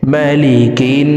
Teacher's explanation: জেরওয়ালা কাফটি তাসদিদওয়ালা নুনের সাথে 3 সেকেন্ড পরিমাণ গুন্নাহ করে পড়ব, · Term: ওয়াজিব গুন্নাহ